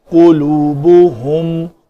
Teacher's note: قاف پیش کے ساتھ، لام واو با ہا کے اوپر بھی پیش، تو یہاں تک یہ کلمہ جو ہے ہمارے شفتین گول ہی رہیں گے